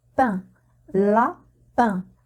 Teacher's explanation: l'air passe par la bouche et le nez c'est pour cela qu'on les appelle voyelle nasales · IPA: [ɛ̃]